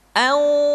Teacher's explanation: maka harus terdengar suara gunnah yang menebal atau disebut dengan tafkhimul gunnah. Contoh, nun mati ketemu dengan qaf, anqadha, tidak dibaca anqadha, tidak angqa, tapi anqadha, anqa.